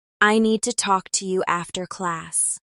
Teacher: I need to talk to you after class stresses need, talk, and class, while the other words are lighter. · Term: stressed words